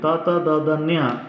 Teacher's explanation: ಮೇಲ್ಪಂಕ್ತಿಯಲ್ಲಿರುವಂಥ ಹಲ್ಲುಗಳ ಹಿಂಭಾಗಕ್ಕೆ ನಾಲ್ಗೆ ಟಚ್ಚಾಗಿ ಈ ಒಂದು ಅಕ್ಷರಗಳು ಉತ್ಪತ್ತಿ ಆಗುತ್ತೆ. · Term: ದಂತ್ಯಾಕ್ಷರಗಳು